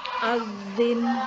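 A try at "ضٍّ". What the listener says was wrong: Lidahnya di belakangnya gigi ya, jangan diturunkan di bawah gigi. Adzin. Jangan sampai terbaca adzin. Ada suara kayak seperti huruf dha itu. Jangan sampai, tapi ditahan suaranya. Adzin, adzun.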